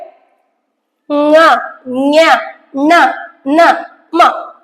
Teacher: ಮೂಗಿನ ಜೊತೆಯಾಗಿ ಹೇಳುವಂತವು ಅನುನಾಸಿಕ ಅಕ್ಷರಗಳು